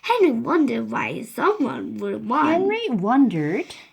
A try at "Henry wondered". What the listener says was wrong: Henry wondered. No. You dropped D. Henry wondered.